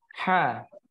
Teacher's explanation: untuk huruf ha makhrajnya terletak pada tenggurukan bagian tengah